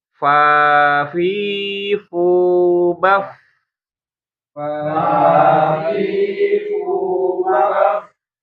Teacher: bibir dalamnya atau perut bibir bagian bawah bertemu dengan gigi seri bagian atas itu huruf fa ya. Bukan kedua bibir.